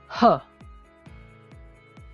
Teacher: Glottal sound is produced at the larynx using the vocal folds as primary articulators